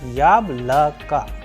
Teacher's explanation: For example, the first vowel Ya is having the stress or the udareni on, and the rest of the sound of the vowels, that is O, and O after letter K is coming as A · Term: udareni or stress